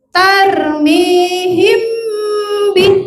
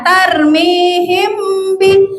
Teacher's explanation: Mimnya agak ditahan dan didengung ke hidung. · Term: ikhfa syafawi